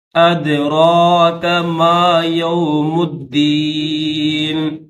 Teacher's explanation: دال حروف قلقلہ میں سے تو اس کو ظاہر کریں گے، اور آپ اوپر چھوٹا سا الف ہے تو اس کو تھوڑا کھینچیں گے، یعنی 1 سے 2 سیکنڈ۔